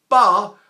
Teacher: But the idea is this pa, which is leaking air, when I stop it, ba, I stop it on the lips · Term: breath stop